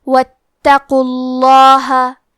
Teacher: حرف القاف کو موٹی آواز میں پڑھنا ہے کیونکہ اس پہ پیش ہے تو لفظ الجلالہ کے لام کا حکم ہے تفخیم تو ہم حرف اللام کو موٹی آواز میں پڑھیں گے